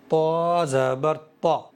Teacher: زبان کی نوک ثنایا علیہ کی جڑ سے مل کر کے طا ادا ہوتا ہے، اور یہ حروف مستعلیہ میں سے ہے، موٹا کر کے پڑھ رہا ہوں میں، تو اس لیے بہت خوبصورت ادا ہو رہا ہے طا۔